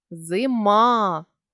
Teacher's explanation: квадратних дужках далі ставимо наголос зима він падає на голосний а голосний і є ненаголошеним а якщо він стоїть у ненаголошеній позиції Він завжди наближається до е